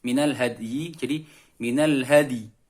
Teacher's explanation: Dal dipantulkan tetapi suara pantulannya agak ke huruf i. Bibir disenyumkan.